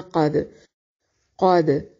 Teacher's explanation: قاف کو موٹا اور دال پہ قلقلہ کریں گے